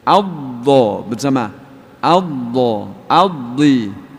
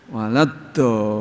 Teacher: Dhad itu paling sulit, punya sifat namanya istitolah. Istitolah seperti memanjang molor.